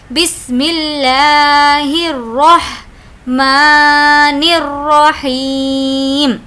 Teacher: لفظ اللہ کے لام کو ہم باریک پڑھ رہے ہیں، ریزن سیم ہے کہ اس سے پہلے زیر ہے۔ بسم اللہ الرحمن الرحیم، اب یہاں پر بھی ہمیں وقف کرنا ہے، تو یہاں پر بھی ہم یہ سمجھے کہ یہ زیر نہیں ہے، یہاں پر جو لاسٹ لیٹر پر ہے اس پر ہم یہ ازیوم کریں گے یہاں پر جزم ہے، کیونکہ وقف کا قاعدہ یہی ہے۔